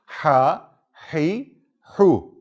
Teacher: boğazın ortası hafif sıkılarak bu harf çıkar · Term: boğazdan çıkan